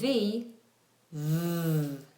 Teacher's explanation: When you make a V v, you'll feel a vibration because your vocal folds, your voice is being used